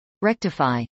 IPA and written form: rˈɛktəfˌaɪ (rectify)